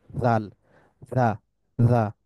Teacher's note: আলতো ভাবে টাচ করে শক্তভাবে টাচ করে না এটা হচ্ছে পার্থক্য দালের ক্ষেত্রে আমরা দেখছিলাম যে শক্তভাবে টাচ করে কিন্তু জালের ক্ষেত্রে আলতো ভাবে বা হালকাভাবে টাচ করে · ইউ থ্যাঙ্ক ইউ তা এরপরের উচ্চারণ হচ্ছে জাল জালের উচ্চারণটা কিরকম tip of the tongue lightly touches the এজ of the upper front teeth অর্থাৎ জিহ্বার আগার অংশটা lightly touches the এজ of the upper